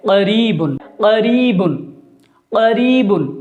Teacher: چونکہ یہ بڑا قاف ہے اس لیے اس کی آواز پر ہو کر نکل رہی ہے، موٹی ہو کر نکل رہی ہے۔